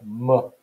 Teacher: m is a bilabial nasal phoneme